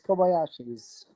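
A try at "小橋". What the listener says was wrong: Kobashi. There's no Y.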